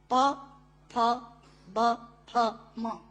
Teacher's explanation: प, फ, ब, फ, म। प, फ, ब, फ, म दोनों होंठ मिलाकर बोले जा सकते हैं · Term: ओष्ठांग